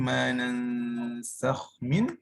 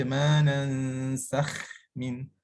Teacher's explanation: so huruf kha tu mesti dibaca tebal lah. Manansakh min, sakh bunyi tebal.